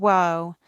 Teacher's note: Now, our second complex vowel is wo. It's a combination of the single vowel woo and another single vowel uh when you put these two sounds together quickly, they become the sound wo